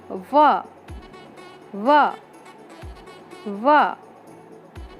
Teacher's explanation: जब आप व बोलते हैं तब आपके ऊपर के दांत नीचे वाले होठों के थोड़े अंदर छूते हैं, तब व की ध्वनि निकलती है।